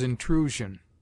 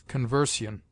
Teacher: It sounds like z before ion if a vowel goes before it, as intrusion, and like s if it follows a consonant, as conversion.